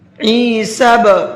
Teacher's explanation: یہ جو آواز بعد میں نکل رہی ہے ہلکی سی ڈبل، یہ قلقلے کی آواز کہلاتی ہے